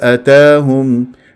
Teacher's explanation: بقصر المنفصل من طيبه حركتين